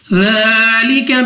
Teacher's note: ذال کو ہم نے نرمی کے ساتھ ادا کرنا ہے، 2 سیکنڈ تک کھینچ کر بھی پڑھنا ہے